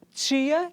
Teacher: esse fonema que é africado, alvéolo palatal e desvozeado